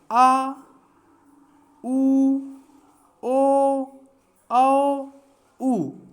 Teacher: जो पश्च स्वर होता है, जिन स्वरों के उच्चारण में जी हाँ का पश्च भाग ऊपर की ओर उठता है उन्हें पश्च स्वर कहते हैं। जैसे आ, उ, ओ, औ, उ, ये पाँच होते हैं।